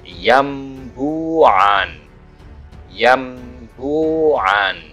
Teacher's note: Nah, nunnya itu dirubah menjadi mim. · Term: iqlab